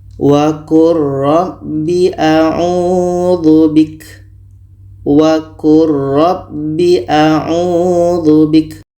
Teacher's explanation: bunyi lam ini kita masukkan ke ro secara sempurna bunyi lam tidak terdengar lagi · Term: idgham mutaqoribain, idgham mutaqaribain